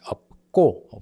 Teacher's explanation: this ㅅ in 없고 is silent here, and then ㅂ and ㄱ together, it becomes [업꼬]